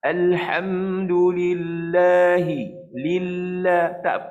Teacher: Tak ada pula kita sekat suara. Pasal lam bukan huruf syiddah.